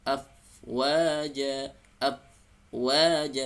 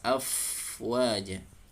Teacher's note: tunaikan sifat atau karakter dari bunyi fa, mengalir nafas, ada alir nafas. Af, jangan tertahan nafasnya.